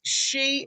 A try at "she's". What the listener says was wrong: and is, but we say she's. She's. It's nearly like a Z on the end, like measure. She's. Can you say measure? Okay, so that sh sound. She's.